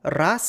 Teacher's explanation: the nominative singular has the letter z pronounced as a voiceless sound, but in the genative singular, it's pronounced voiced as in raza. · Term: voicing assimilation